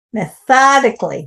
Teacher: Methodically, it's on the tho.